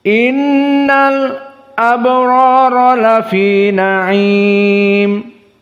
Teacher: Maka al-abrar di sini disaktah 2 harokat saja. Innal 2 harokat baru abrar, seperti itu. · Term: as-sakt